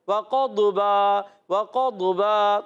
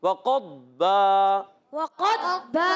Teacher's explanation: अब वाव की अदायगी होंठों की गोलाई से, क़ाफ मोटे उरूफ उर्फ़ मुस्तालिया में से, और दौद उर्फ़ मुस्तालिया में भी है और उर्फ़ मुतबका एक्स्ट्रा मोटे उरूफ में भी है, याद रखना है। और दौद को साकिन रखना है, कलकला नहीं करना। बाज़ बच्चे बड़े करते हैं वक़द्बा वक़द्बा, दौद में कलकला नहीं, वक़द्बा, वक़द्बा।